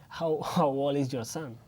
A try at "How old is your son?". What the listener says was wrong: ¿Y la D de old?